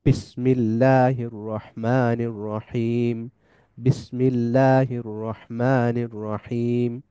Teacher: যে বাতাস আবদ্ধ থাকে, বাতাস বের হয় না, বাতাস যখনই মু- ঠোঁট দুইটা আলাদা হওয়ার মাধ্যমে যখনই বাতাস বের হয় তখনই উচ্চারিত হয় বা